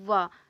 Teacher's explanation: जो वा ऐसा वर्ण है जो दंतोष्ठ मतलब दंत से और ओष्ठ से दोनों से बोला जाता है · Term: दंतोष्ठ ध्वनि